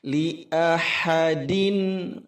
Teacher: Li'ahadin, li'ahadin, ini 1 harakat semua, tekanan hamzah pada a jelas, ha-nya juga jelas, halus. Li ahadin din itu kasratain bertemu dengan huruf ain, ilhar halqi, harus jelas. Din tidak boleh ditahan lama, juga tidak boleh mantul.